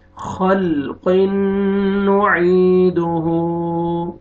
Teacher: यहाँ पे देखें तनवीन के बाद हरूफ यरमलून में से नून है, यहाँ पे आपने गुन्ना के साथ इदगाम करेंगे, नून मुशद्दद भी है, गुन्ना करेंगे। और आगे या मद है, या सुकून से पहले कसर ज़ेर है, आपने आइन को खींचना है।